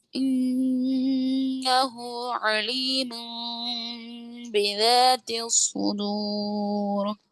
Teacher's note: نون کو میم سے بدل کر پڑھیں گے